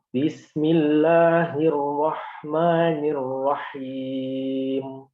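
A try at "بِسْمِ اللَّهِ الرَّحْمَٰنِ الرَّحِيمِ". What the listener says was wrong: Tamam.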